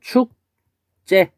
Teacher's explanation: 근데 이 발음을 표기대로 발음할 때 이렇게 되지만 이제 음운 변동에 따라서 발음을 해보면 축제 이렇게 됐죠. 그래서 지읒이 쌍지읒으로 바뀌었어요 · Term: 된소리 되기